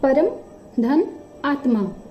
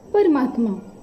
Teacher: परम में ह्रस्व अ है, उधर आत्मा का दीर्घ आ है, संधि हो रही है तो दीर्घ आ बनता है और संधि होती है परमात्मा।